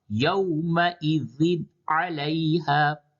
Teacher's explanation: تنوین کی آواز کو ظاہر کر کے یعنی ناک میں نہ لے جا کر کے پڑھنا صاف صاف، यौमइज़िन अलैहा, यहाँ पे नून साकिन के बाद हा हर्फ हल्की है, इस वजह से इस जगह पे इजहार होगा, ये जगह है। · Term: اظہار